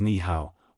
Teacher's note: when 2 third tones appear together, the first one is often pronounced with a second tone pitch, rising instead of dipping. This is known as the tone Sandy rule, a phenomenon where the tone of a character changes based on its position in the sentence. · Ni hao, hello, is usually pronounced as ni hao, where the first tone changes to the second tone due to the presence of another third tone. This shows how Chinese speakers often adjust their pronunciation for ease.